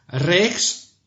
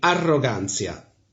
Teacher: R is rolled, which can be difficult for English speaker.